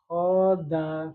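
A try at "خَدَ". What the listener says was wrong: Tidak panjang ya. Khoda kalau antum bacanya khoda itu panjang kho-nya tapi khoda. Da-nya belum. Khoda. Dal satu tempat dengan ha ya.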